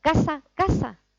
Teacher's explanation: Dicen las 2 palabras exactamente igual, porque son seseantes. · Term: seseo